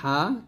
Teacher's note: হলকের মাঝখান থেকে গলার স্বর শব্দ বের করতে হবে